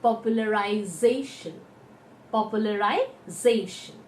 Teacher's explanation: the second syllable from the right will be done more strongly · And whenever we have a tion ending at the back, we count from the right hand side. The second syllable from the right will be told more strongly. And hence it is popularization.